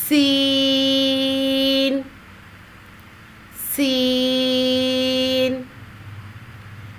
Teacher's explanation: 3 حرفی آواز، 2 گنا کھینچ کر ادا کیا جائے گا. زبان کی نوک کو سامنے والے نیچے کے 2 دانتوں کے کناروں سے مضبوطی کے ساتھ لگا کر باریک اور سیٹی جیسی آواز میں پڑھیں گے